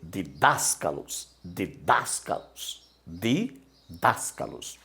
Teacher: Olha a sílaba tônica aqui, ó. A sílaba tônica é das.